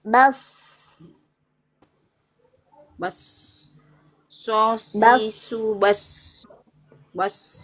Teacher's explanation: Ya, baknya tipis, wadnya tebal.